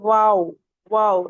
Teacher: हमारे लिप्स गोल हो लेकिन मिले नहीं। एक पेंसिल गैप होना चाहिए कि उसके अंदर एक पेंसिल डाली जाए तो चली जाए।